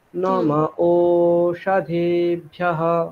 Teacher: ওকারটাকে টানতে হবে, ভুল করলে চলবে না। হ্রস্ব দীর্ঘ ভুল করলে চলবে না